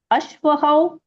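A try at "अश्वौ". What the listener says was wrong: Ashvau, not Ashvakau.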